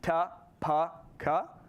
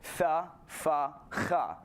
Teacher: in Indo-European, the stops, the sounds that have a stop of air in your mouth, ta, pa, ka, all became fricative. So tha, fa, cha.